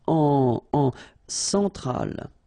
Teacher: Centrale, remember, E-N, nasal, so it goes in your nose